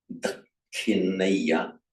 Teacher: It's treated as a double K, with the aspiration, of course, only after the second K. It would be virtually impossible to aspirate the first one anyway. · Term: doubled aspirate